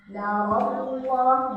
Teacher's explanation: ini lam jalalah tafkhim narallah tebal ya